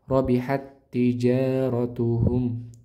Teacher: Roknya tebal tafkhim karena berharokat fathah.